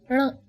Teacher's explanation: This may seem to be a difficult sound as it doesn't exist in English. Just try saying n, but roll back your tongue slightly.